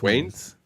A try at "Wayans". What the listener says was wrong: You're adding you're adding an ANs at the end, but I feel like it's just Wayans. You are correct, but that doesn't mean that it's pronounced that way.